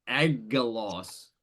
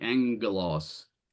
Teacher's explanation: then you nasalize the gamma. And so that a classic example is the word for angel, which is angelos, which is not spelled with a nu, it's spelled with 2 gammas.